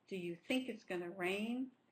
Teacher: Going is not stressed because going to is an auxiliary verb here. It's part of the future, going to rain. · So the 2 stresses are going to be think and rain.